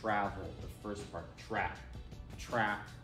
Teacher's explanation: in American English, travel, the stress is on travel, the first part